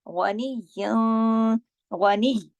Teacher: ग़ा को मोटा पढ़ेंगे, ग़ाइन हमेशा मोटा पढ़ा जाता है क्योंकि वो खुशा-दिन की फैमिली से है, 7 मोटे हुरूफ में से है, 7 हेवी लेटर्स में से है।